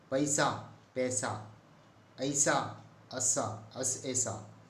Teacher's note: ऐ और औ जो दो संयुक्त स्वर हैं का उच्चारण ए और ओ होता है।